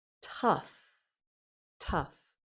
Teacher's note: There's a little puff of air for that first T, and then it's followed by the short U, as in cup.